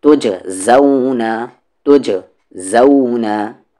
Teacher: قلقلہ ہوگا یہاں پر جیم ساکن پر کیونکہ جیم ساکن ہے ، جیم پہ اگر زبر زیر پیش رہتا تو قلقلہ نہیں